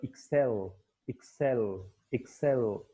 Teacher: तो एक्सेल that is on the second syllable